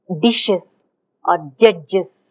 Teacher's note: naturally we come up with certain repair strategies by inserting a vowel